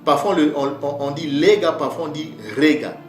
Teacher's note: vous voyez que le L et le R se confondent en paléo-mbala